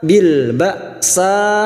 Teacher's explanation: Fa'akhadnahum, sekarang di sini kita wasol atau terus, maka kita uraikan mim sukun bertemu ba. Mim sukun bertemu ba, namanya ikhfa syafawi. Mim sukun mendengung selama 3 harokat.